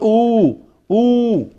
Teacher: the back of the tongue as high as possible